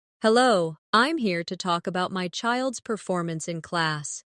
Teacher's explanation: Stress performance, so it's clear what you're discussing.